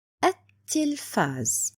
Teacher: So the pronunciation will be at-tilfaz, like I don't see lam at all. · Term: lam shamsiya